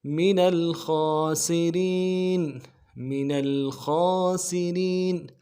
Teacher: خا کے اوپر کھڑا زبر ہے, ایک الف دار میں کھینچیں گے, خا کو موٹا کریں گے. خا, سین کی سیٹی باریک ہوگی, را کو باریک کریں گے